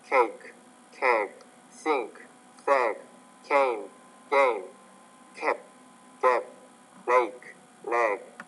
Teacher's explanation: when the G's at the end of the word, you're making the vowel before it longer